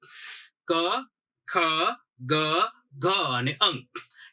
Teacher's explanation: ક વર્ગ છે ક્યાંથી બોલાણો તો કે કંઠમાંથી બોલાણો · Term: કંઠ્ય વર્ગ